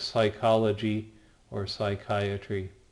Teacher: Then we have the psi, which makes the PS sound. Most people don't emphasize the P and let it be kind of silent, so that's where we get words like psychology or psychiatry.